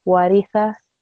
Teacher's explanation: the fatha and the kasra sound both are very short. So they're 1 second, one count.